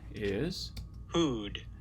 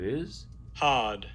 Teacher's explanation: the F2 is about the same here for both of these, which means that it's a back vowel in both cases. F1 is much higher here for the Hard.